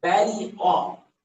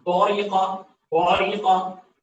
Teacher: اس قاف کے موٹاپے کی وجہ سے با کو موٹا پڑھنا